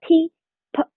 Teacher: p 只有气流。气流冲出，但是没有声带振动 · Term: 清辅音